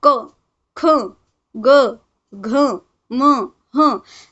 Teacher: आप लोग बोल कर देखें तो ये सब कहाँ से आवाज़ आ रही है, हमारे गले से आवाज़ आ रही है, इसीलिए इसे कंठ, गला, कंठ, और इसका नाम क्या है, वर्णाचे नाव क्या दिए गए हैं, कंठ्य।